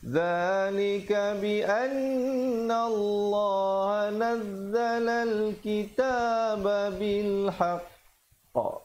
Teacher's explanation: Di situ dibacakan qalqalah menjadi qalqalah akbar, di situ qafnya bersabdu. Tahan sekejap baru lepaskan pantulan.